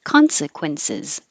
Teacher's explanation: the cis at the end is really a z but it doesn't have to be a perfect z